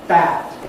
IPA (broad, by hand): bæd